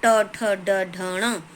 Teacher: ट वर्ग, ट ठ ड ढ ण, और जब हम इस ट ठ ड ढ ण वर्णों को बोलते हैं तो हमारी जिह्वा मूर्धा, तालु के ऊपर वाला जो टाइट वाला हिस्सा है वो मूर्धा है, तो उसको स्पर्श करती है